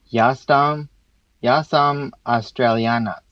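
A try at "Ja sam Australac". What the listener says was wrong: So that R sound, make sure you give that R a roll. So you pronounce it like an American would. Try to give it some more Croatian. So all the sounds are at the front of your mouth, right?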